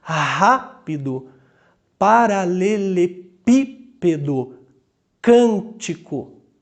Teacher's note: A antepenúltima é a sílaba tônica.